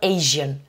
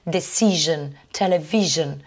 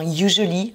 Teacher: Et là, vous remarquez aussi une singularité dans la prononciation sur ces mots-là, Asia et Asian. Vous avez le S qui se prononce comme un je. Alors ça, on le retrouve dans certains mots, comme tous les mots qui finissent par S-I-O-N.